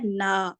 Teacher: الف مدہ کے ساتھ جب ادا کریں آپ تو غنہ کو ناک میں جانے سے روکنا ہے